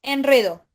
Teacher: no hay una diptongación no se le agrega la i